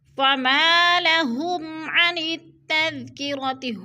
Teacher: فما لهم عن التذکرۃ، ہم پہ جو ہے اظہار شفوی، میم ساکن کے بعد عین حروف حلقی میں سے آ رہا ہے، تو ادھر اظہار شفوی کریں گے، یعنی غنہ نہیں کریں گے بلکہ لفظ کو ظاہر کر کے پڑھیں گے۔